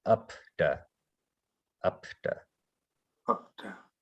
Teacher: you'll notice it doesn't vibrate when you pronounce the P